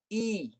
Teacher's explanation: Dia akan bunyi begitu. Bunyi I. Itu tengah lidah naik. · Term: ya yang mati